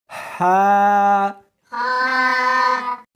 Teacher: اس کو حلق میں سے نکالنا ہے اور ساتھ میں ہوا بھی ہونی چاہیے